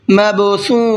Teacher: کالفراش، را کو پر کر کے پڑھیں گے، مبثوث، یہاں با کے اندر بھی قلقلہ کریں گے اس لیے کہ با حروف قلقلہ میں سے ہے اور اس کے اوپر جزم بھی ہے۔